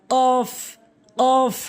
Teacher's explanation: জিহ্বার গোড়া হতে একটু আগে বাড়াইয়ে উপরের তালুর সঙ্গে মিলিত করে উচ্চারণ করতে হয়। জিহ্বার গোড়া হতে একটু আগে বাড়াবেন, তারপরে ওই অংশটা উপরের তালুর সঙ্গে লাগাবেন, কাফ কাফ সঠিক উচ্চারণ, কাফ।